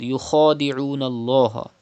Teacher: Kha is a mustaliya letter. You have to read with thicker voice.